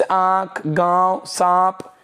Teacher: उच्चारण करते समय नाक की अपेक्षा मुख से ज्यादा इसका उच्चारण होता है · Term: अनुनासिक